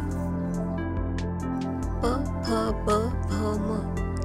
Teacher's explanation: यांना ओष्ट म्हणतात कारण यांचा उच्चार ओठ जुळल्याने होतो